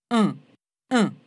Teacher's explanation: dans le son un, on sent aussi qu'il se passe quelque chose dans le fond de la cavité buccale pour dévier l'air vers le nez.